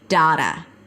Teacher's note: You can also say data and then use the A as in father sound, but still make sure it's a flap T. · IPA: ˈdeɪɾə